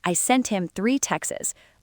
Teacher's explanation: In fast speech, native speakers will often drop the T and just say text.